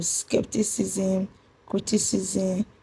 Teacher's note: The stress on skepticism is on SCEP, while the stress on criticism is on CRI.